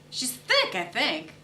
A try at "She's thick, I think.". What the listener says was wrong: no, you're emphasizing the thing. She's thick, I think. She's thick, I think.